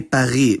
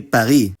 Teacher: it’s pretty likely that [ʁ] will soften to an approximant [ʁ̞], like it is in Hebrew or, sometimes, German. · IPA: [paˈʁ̞i]